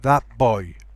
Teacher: But notice that t becomes a p. It doesn't become a b, as in bad boy. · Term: Changes in place of articulation